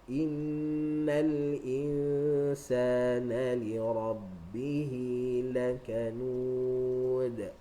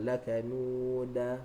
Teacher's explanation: bila qalqalah, maka dia punya bunyi qalqalah tu ke arah baris atas, ke arah baris fathah